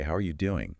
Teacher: The slowing down of the phrase signals that they genuinely want the detailed, honest truth.